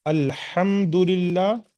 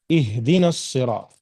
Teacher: الحم کی جو ہا ہے وہ بڑی ہا ہے، اور اہدنا الصراط المستقیم کی جو ہا ہے وہ چھوٹی ہا جسے ہم کہتے ہیں۔ تو یہ ایک جو سینے کے قریب کا حصہ ہے حلق کا، وہاں سے حمزہ اور ہا نکلتا ہے، یاد رکھیے گا۔